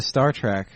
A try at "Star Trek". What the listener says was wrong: Yeah, why are you saying track? It's Trek.